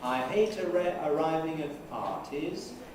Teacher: the pitch at first is high and then it must come low before we rise but the fall isn't in the nuclear syllable it's before and